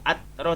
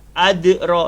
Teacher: Dal ini termasuk huruf qalqalah, kena lantun. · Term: qalqalah sughra